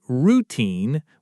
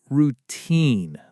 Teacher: They say routine with the emphasis on the first part, but it's actually routine. The stress is on the second syllable.